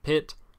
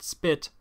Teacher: I pronounced pit with an aspirated P but spit with a none aspirated P